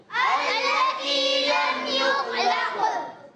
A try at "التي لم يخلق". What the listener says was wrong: خا کے اندر قلقلہ نہیں ہوگا, قاف کے اندر قلقلہ کریں گے. التی لم یخلق